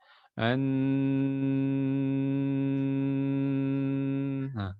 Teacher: Memang tertutup dari segi di lidah, di segi mulut. Tetapi dia mengalirnya melalui hidung. Makanya masih mengalir suaranya. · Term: bainiyah